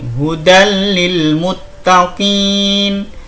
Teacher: Nah, ini tanpa dengung, langsung hudal lil muttaqin.